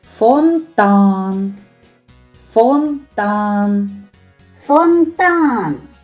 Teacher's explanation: А який голосний звук є наголошеним? Фонтан. Фонтан. Фонтан. Голосом більше виділяється звук А. Над звуком А і ставимо наголос.